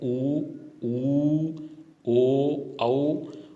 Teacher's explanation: जैसे अपन रेखा गणित में पढ़ चुके हैं वृत्त, तो वृत्त का मतलब होता है गोल, तो इनके उच्चारण में होठों की आकृति गोल हो जाती है, तो ये वृत्ताकार स्वर कहलाते हैं।